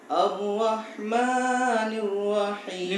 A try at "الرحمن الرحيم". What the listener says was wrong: لماذا تمد؟ الرحمن الرحيم.